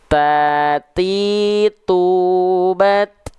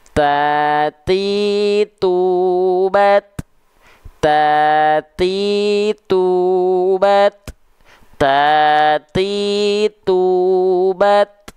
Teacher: jadi pastikan huruf ta itu dia hanya berupa percikan nafas kenapa enggak sampai mengalir nafas Kenapa karena dia disandingkan dengan sifat yang namanya syiddah tadi kalau